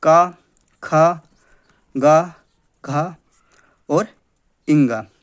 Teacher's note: का वर्ग जो है उसका उच्चारण स्थान हमने पिछले वीडियो में देखा था कंठ है